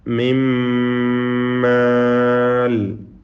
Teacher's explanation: നൂനിനെ പൂർണ്ണമായും ഇദ്ഗാം ചെയ്തു, ലയിപ്പിച്ചു. ശേഷം ശബ്ദ് നൽകപ്പെട്ട ഒറ്റ മീമിനെ മാത്രമാണ് ഉച്ചരിക്കുന്നത്. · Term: ഇദ്ഗാം കാമിൽ